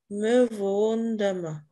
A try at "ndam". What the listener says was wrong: Non, ce n'est pas ndem, c'est ndam.